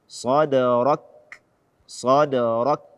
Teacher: Tidak membaca hamas atau tidak memberikan hak hamas pada kaf sukun. Kita syiddahkan dulu, kemudian kita hamaskan kaf tersebut. Sadarak, sadarak, bukan sadarak atau sadarak.